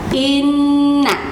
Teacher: nun dan mim yang bertasydid, maka itu harus dibaca ditahan 2 ketuk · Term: nun bertasydid